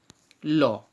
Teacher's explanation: Next, পার্শ্বিক বর্ণ। উচ্চারণের সময় জিভের দুই পাশ দিয়ে যদি বায়ু বেরিয়ে যায় তাকে বলছে পার্শ্বিক বর্ণ।